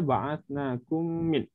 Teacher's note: Kita baca dia mim ni masuk ke dalam mim yang kedua berserta dengung.